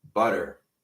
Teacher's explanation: The hard R's, really rhotic, really clear, and the soft T's.